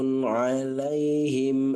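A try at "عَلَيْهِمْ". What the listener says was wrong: Kalau ana dengarkan h-nya ada knya sedikit. Khum. Khum gitu. Hum. Jadi jangan ada khnya.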